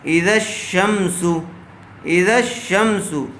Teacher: الف اور لام کو نہ پڑھیں گے، بلکہ بعد والے حرف سے ملا کر پڑھیں گے۔ جیسے اذا الشمس، اذا الشمس، یہاں الف اور لام دونوں کو ہی چھوڑ دیا گیا، زال کو شین سے ملایا گیا۔ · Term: حروف شمسی